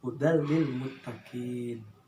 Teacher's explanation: maka membacanya harus diidghamkan, tetapi tidak memakai gunnah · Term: idgham bila gunnah